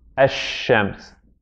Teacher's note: So the sheen now becomes double. It becomes a, we have a shadda on it.